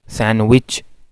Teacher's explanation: सैंडविच में डी की एलिजन होती है, सैंडविच। और इसकी असल में इसको प्रोनाउंस भी आमतौर पर अब इसी तरह किया जाता है।